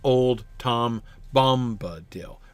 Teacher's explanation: But the 3 stressed lines in a row, that's a spondaic foot. So again, instead of doing the stressed, unstressed, he just does stressed at the start